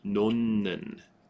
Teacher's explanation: the H sound is replaced with an N